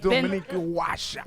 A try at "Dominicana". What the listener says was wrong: Dominicana washa. Dominicana isn't like Dominican. It's Domini for the Dominican. Cana is for Canada.